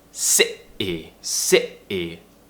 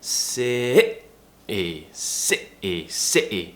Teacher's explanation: So that's how we do the glottal T. It's tightening the throat, really tensing it, and cutting a sound out to replace the T.